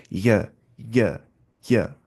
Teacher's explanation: जबान का बीच और इसके मुकाबल ऊपर का तालु तो पता ही है, जबान का बीच, या, या, या।